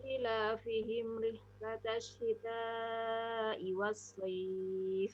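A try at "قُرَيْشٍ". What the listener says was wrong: Shinnya yang bertitik itu pada saat sukun belum begitu nampak. Quraisy.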